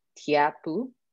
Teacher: where we have a t followed by a palatal glide